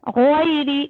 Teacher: غین حروف مستعلیہ ہے, بھاری کر کے پڑھنا ہے آپ کو. دیکھیے لین کو میں بھاری نہیں کر رہی ہوں, غین کو بھاری کرنا ہے.